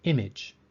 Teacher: the a in image sounds like a short i sound